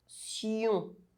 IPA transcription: sjɔ̃